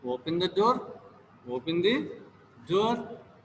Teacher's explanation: You can find the falling intonation in the statements